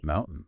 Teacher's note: enunciate it as mountain with a crisp puff of air on the T